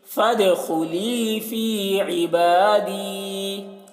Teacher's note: یہاں پر آیت ہے تو عبادی ہی پڑھیں گے، فد دال میں قلقلہ کریں گے